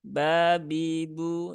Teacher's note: huruf ba itu dia tidak ada sifat ee hamsnya